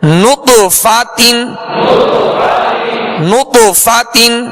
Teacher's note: تا دو زیر تین، نطفتن، نطفتن. جب نط کہیں گے تو ہونٹوں کو گول کریں گے کیونکہ نون پر پیش ہے. فا کی زبر پڑھتے ہوئے آواز اور منہ کھولیں گے، تا کی دو زیر پڑھتے ہوئے آواز کو گرائیں گے.